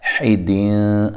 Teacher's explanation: یہاں نون تنوین کا اخفا مع الغنہ ہے، باریک اخفا ہے